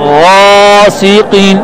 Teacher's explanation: غین کو موٹا پڑھنا ہے لیکن الف میں ہون گول نہیں کرنے. غاسق غلط ہے.